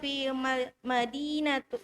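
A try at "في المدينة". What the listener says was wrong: Fil, ada al, fil. Ada al lagi di sini berarti fil. Fil Madinatil.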